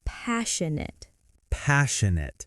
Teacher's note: The keyword is passionate. Three syllables, stress on the first.